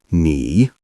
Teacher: Make sure your voice rises gently because this is the second tone.